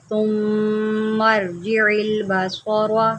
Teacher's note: میم شدید ہے، یہاں پر غنہ کریں، اس کو سا نہیں پڑھنا، اس کو نرمی سے پڑھنا ہے